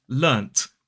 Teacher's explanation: people will quite commonly pronounce this word as learnt with the T sound, because they're actually saying this word that is written with a T.